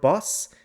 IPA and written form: bɐs (boss)